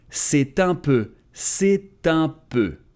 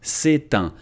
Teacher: c'est ends with a T, and normally it's muted, c'est, but here because there is un, we're supposed to say c'est un. But he doesn't make it, so in a proper context, you should make it, and grammatically that's what's considered correct, but he doesn't. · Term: liaison